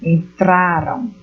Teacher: Então, no verbo aqui, nesse que estou apontando, entraram, né? A sílaba tônica ela é identificada aqui na penúltima sílaba.